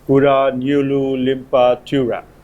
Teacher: the primary stress is placed on the leftmost syllable the secondary stress is placed on the third syllable